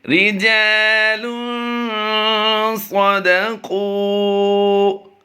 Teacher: دال زبر دا کو ہم نے لمبا نہیں کرنا۔ قاف واو پیش کو ہم لمبا کر کے پڑھیں گے۔